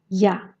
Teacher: Le son ya se compose de deux sons i bref, a, qui se prononcent presque en même temps